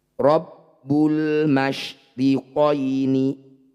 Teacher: Alif diikuti lam sukun ini disebut bacaan izhar qamariah cara bacanya bunyi lam sukun baca jelas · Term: idhar qamariyah